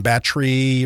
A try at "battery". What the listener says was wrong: Why'd you say it that way? Battery? You didn't pronounce one of the E's in battery.